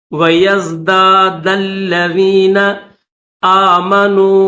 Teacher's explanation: دال کو لام کے ساتھ ملائیں گے